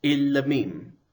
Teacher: The propretonic can't reduce, but the pretonic has a tsere, which will reduce to shava